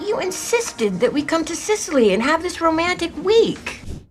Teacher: she really raises her pitch here to stress the word insisted